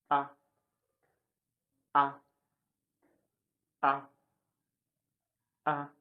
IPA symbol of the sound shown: ʌ